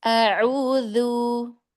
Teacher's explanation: Dzanya ringan lagi, tidak tebal, jangan a'udzu, tapi ringan.